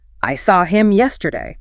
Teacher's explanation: If you stress the object pronoun, which is normally a reduced function word, the effect is dramatic.